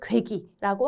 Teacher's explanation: 뒤에 있는 이 이가 앞에 있는 고에게 영향을 끼쳐서 얘가 괴기라고 읽히는 경우가 있어요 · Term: 전설 모음화